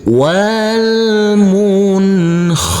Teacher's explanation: dengan huruf hoho maka di sini adalah bacaan izhar walmun khaniqoh huruf ta marbutah karena kita wakafkan maka berubah menjadi huruf ha